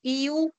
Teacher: la lengua se eleva más para articular estos sonidos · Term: vocales altas